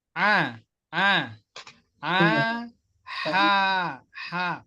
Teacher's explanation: huruf ain itu makhrajnya sama kan, dari tempat tengah tenggorokan di sini, tengah.